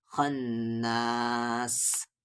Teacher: لائیں گے، سل، وس و سل، خا کو نون میں خن، نون پہ تشدید ہے، غنہ ہوگا